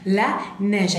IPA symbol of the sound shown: ɛ